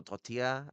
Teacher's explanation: So, it becomes a because they've gotten rid of the other half of the L that makes the L sound come together. You scoop your tongue instead of uh overlapping your tongue like you would with a L. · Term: double L